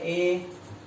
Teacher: कंठ और तालु मिलेंगे तो परिणामी स्वर ए आएगा।